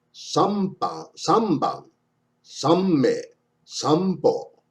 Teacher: The N before B, M, and P is pronounced like M in the word sample.